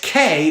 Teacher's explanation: take this k which is a velar stop and articulate it like an s which is a fricative you